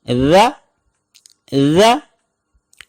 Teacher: ذال کا مخرج بھی بالکل سیم سا کی طرح ہے، یعنی زبان کی نوک جب ہم اوپر والے دانت کے ساتھ لگائیں گے یا تھوڑی سی باہر نکالیں گے تو ذ ادا ہوگا · ذال پر زبر ہو تو اس کی آواز ہوگی ذ ذ۔ یاد رکھیں یہ ز نہیں ہوگا، یعنی اس میں سختی نہیں ہوگی بلکہ انتہائی نرمی کے ساتھ